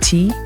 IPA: t